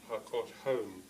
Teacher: it has a single primary stress at the end